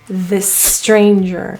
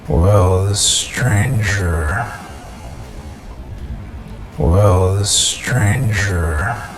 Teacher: this and stranger end and start with an S so instead of saying it twice you'll notice it's linked